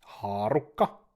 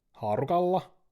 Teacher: The simplest type of gradation to spot is when the consonants K, P, and T change from the strong double consonant to a weak single consonant